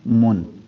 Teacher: اظہار میں یہ ہے کہ ہم اس کو نون کو ظاہر کر کے پڑھیں گے. تو پھر یہ نون کا اظہار اگر کریں تو پھر یہ من نہیں ہوگا، اور میم پیش نون من.